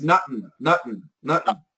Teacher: Okay, one day I was watching an American movie with black guys, and it sounds like they were saying nothing with an N sound and a TH very weak